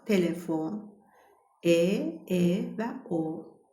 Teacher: E açıqdır, O açıqdır. Çünki dişlər bir-birinə dəymir. Alt çənə və üst çənə bir-birindən aralı qalır.